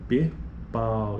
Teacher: Este exemplo aqui mesmo, a palavra pau, esquece a consoante, mas pensando na sílaba que a consoante faz parte, então P, pau, esse A fica bem forte, é o pico da sílaba, é a vogal, e depois disso vem o U, que já está bem mais enfraquecido, vejo que quase não sai, a proeminência na fala é da vogal A, por isso que nesse caso, nesse ditongo aqui, aí ele está nos informando que o núcleo, o pico da sílaba é sempre a vogal, neste caso.